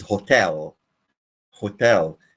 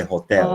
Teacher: never pronounce the this word as Hotel this is hotel hotel you stress the second syllable not the first syllable